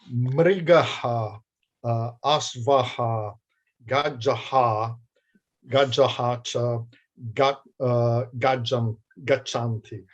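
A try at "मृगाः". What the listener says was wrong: The way I heard you saying it is if all of these were short.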